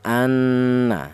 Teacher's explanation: Di samping idgham juga ada dengungnya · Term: ghunah